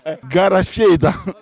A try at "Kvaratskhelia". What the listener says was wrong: Però la V non si vede bene. Prima la K.